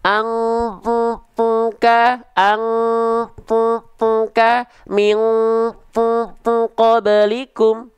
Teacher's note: Huruf qof Kaf dia dengungannya kerasa di hidung